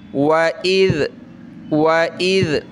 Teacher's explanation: دیکھیں الف کے اوپر زبر زیر پیش آ جائے تو حمزہ بن جاتا ہے، اس لیے اس کو حمزہ پڑھیں گے اور ذال کے ساتھ یہ ملے گا. ذال کو نرم کرنا ہے، زبان نکالنی ہے تھوڑی سی